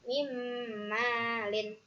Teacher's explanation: Alasannya karena nun sukun bertemu dengan mim. Alasannya cara membacanya masuk dengan mendengung 3 harokat. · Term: idgham bigunah